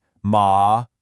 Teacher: the fourth tone. It's a sharp falling sound, almost like a command